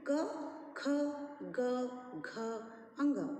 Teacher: कंठ से उच्चारण करने वाले वर्ण क वर्ग के अंतर्गत आते हैं। क, ख, ग, घ, अंग, इन्हें कंठयः कहते हैं।